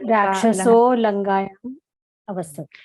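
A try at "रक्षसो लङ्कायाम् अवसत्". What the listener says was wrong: It should be the first kakara. It's not lankha, it is lankayam. So Rakshaso Lankaya Avasat.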